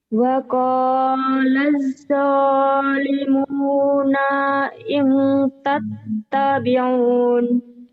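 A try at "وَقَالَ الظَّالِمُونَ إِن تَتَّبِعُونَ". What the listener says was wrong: waqalat kurang yang bersih itu. Waqalaz zalimuna in tattabi'un kurang nyambar tasdidnya, yuk disambarin.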